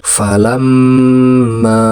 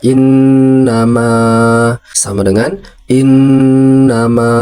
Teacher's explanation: dibaca sedikit ditekan dan ditahan di huruf yang sama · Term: Tasydid